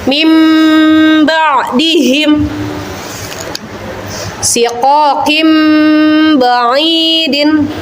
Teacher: Huruf iqlab cuma ada 1 anak-anak, yaitu ba. Apabila nun sukun atau tanwin bertemu dengan huruf ba, maka menjadi bunyinya mim dengan dengung.